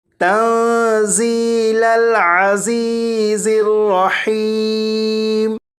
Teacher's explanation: یا ساکن سے پہلے زیر ہے، انہیں ایک ایک الف کے برابر کھینچ کر پڑھیں گے